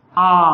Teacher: इसमें मुख जो है अधिक खुलेगा, अन्य स्वरों की अपेक्षा उस सबसे ज्यादा खुलेगा। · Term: विव्रत स्वर